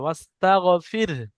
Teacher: যদি আপনি দম নেন অর্থাৎ দাঁড়িয়ে যান তাহলে ওয়াস্তাগফির, হাকে সাকিন করতে হবে, ওয়াস্তাগফির।